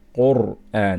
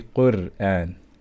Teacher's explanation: So here we're going to pronounce ra with strength. Qur'an. We're not going to say Qur'an.